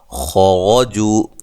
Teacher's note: خا کو موٹا اور را کو موٹا ادا کریں گے